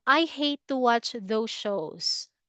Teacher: Period. No rising, no falling. Just plain intonation of the voice.